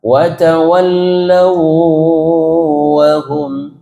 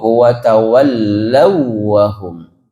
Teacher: Ini wunnya bertasydid tapi bacaan sebelumnya bukan nun mati, bukan juga tanwin. Maka ini tidak perlu ditahan. Jadi bacaannya bukan watawallau wahum bukan begitu.